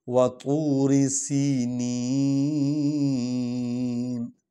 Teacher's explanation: نون کو یا کو لمبا کریں گے کیونکہ یا مدہ ہے یہ، یعنی اس کو ہم کھینچ کر پڑھ سکتے ہیں۔ آیت بھی ختم ہو رہی ہے اور ہم وقف کر رہے ہیں، تو اکثر وا اور یہ جب آتی ہے آیت کے خاتمے پر تو اس کو جو ہے نا لمبا کر کے پڑھا جاتا ہے، یہ حروف مدہ ہے، وا اور یا۔